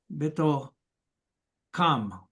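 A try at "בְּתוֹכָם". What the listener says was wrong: Betocham. Without the weak dagesh. So it has that gravelly sound. Betocham.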